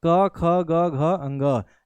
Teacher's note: कहीं पर भी जीभ नहीं जा रही है, सीधे आवाज गले से आ रही है। ठीक है, सीधे आवाज गले से आ रही है, तो क ख ग घ अंग जो है वो कंठ से बोला जाता है, गले से बोला जाता है।